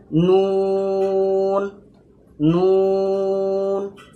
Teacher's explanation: নুনেও same মেমের মতো 3 আলিফ টান দিয়ে আমাদেরকে বলতে হবে।